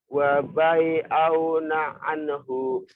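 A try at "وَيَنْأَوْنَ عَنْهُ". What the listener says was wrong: Salah. Lihat baik-baik. Masa titiknya 2 dibaca wabai. Bukan waban. Wayan. Wayan auna anhu. Kamu sering ketukar ba dan ya.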